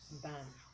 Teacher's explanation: not add what's called the schwa at the end